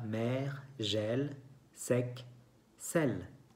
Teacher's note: No hay acento, pero se escucha que hay un sonido abierto con la boca abierta.